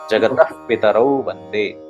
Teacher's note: अगर विसर्ग के बाद प आ रहा है तो विसर्ग का हल्का सा प उच्चारण होगा